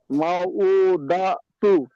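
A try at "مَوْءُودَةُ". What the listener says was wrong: দাটা ছাড়ছেন কেন? দাতুটা একসাথে বলেন, দাতু।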